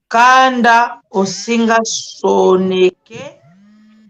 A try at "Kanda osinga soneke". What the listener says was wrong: Osinga soneke. Il faut bien prononcer parce qu'en Kikongo, il y a pitch. Donc, ta question, c'est la tonalité. Osinga soneke. De nouveau, kanda osinga soneke. Osinga soneke.